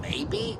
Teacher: spoken with a furrowed brow and a falling tone doubt and disbelief